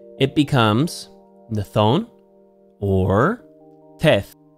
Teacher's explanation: Again, the accent moves to the first syllable.